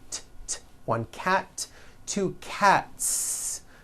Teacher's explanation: Again, the s ending is unvoiced.